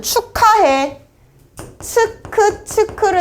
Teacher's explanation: 기역과 히읗이 만나면 크로 발음이 된다는 걸 알고 있는 거야. 그래서 축약이라고 하는 거는 축하해, 치크를 생각하세요.